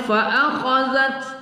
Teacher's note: Kemudian berikutnya fa akhazat ta, kita ada berangin berembus, angin berembus pada sifat hamis pada ta